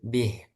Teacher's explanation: karena dia berhenti sehingga dibaca pendek. Bukan bihi tapi bih.